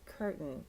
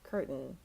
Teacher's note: one curtain okay so this one looks like Curt Kane but especially for American English which is what I'm teaching you and we kind of soften the t